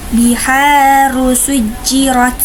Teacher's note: ro yang pertama yaitu ro tafkhim karena roknya berharokat dhammah maka harus dibaca tebal, dan sedangkan ro yang kedua juga sama dibaca tafkhim karena berharokat fathah maka harus dibaca tebal juga.